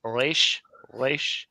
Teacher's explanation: properly you're supposed to pronounce it in the back of your throat like reish, reish. It's hard for Americans.